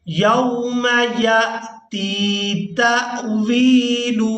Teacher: یا کو حمزہ ساکن کے ساتھ ملاتے ہوئے جھٹکے کے ساتھ ادا کریں گے، اس کے بعد تا کو یا مدہ کے ساتھ ملاتے ہوئے کھینچ کر ادا کریں گے۔